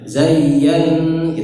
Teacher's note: Ya-nya ditasydid tidak perlu ditekan lama-lama.